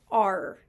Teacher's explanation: notice how it starts off a little bit slightly closed and opens up a little bit